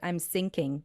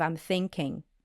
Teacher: she is used to saying sound s instead of th. So there might happen something like I'm sinking instead of I'm thinking, you know, and that's a very tricky mistake to make.